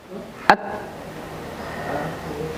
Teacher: Syiddah itu adalah sifat di mana saat kita mengucapkan jiwa dari huruf ta itu tertahan suara. At, tertahan suara.